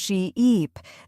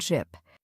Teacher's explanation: way to practice this is by exaggerating the long vowel sounds say sheep and stretch the e sound sheep then say ship with a short sound ship